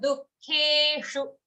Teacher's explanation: Dukkhe, ke long. After that, shu at the end of this charan, short.